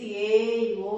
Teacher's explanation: త్రిమాత్ర కాలంలో దూరంగా ఉన్న వారిని పిలుస్తాం, చాలా దీర్ఘం తీసి ఏ ఓ అని పిలుస్తాం